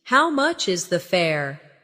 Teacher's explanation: The stress is on how much and fare.